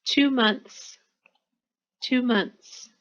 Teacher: when you add an S sometimes the th you might not hear it or you might not say it